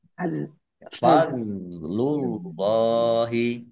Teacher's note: dok sukun ya bukan kolkolah jangan dipantulkan Al- Fadl. fadlullahi Allahnya dibaca tebal karena harokat di depannya dhammah